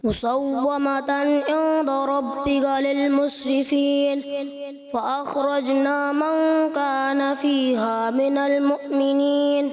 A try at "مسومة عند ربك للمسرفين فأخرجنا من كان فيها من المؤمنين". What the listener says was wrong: اچھی کوشش کی مگر تھوڑا سا غنہ عیندہ یہ کم محسوس ہوا، مگر غنہ کیا.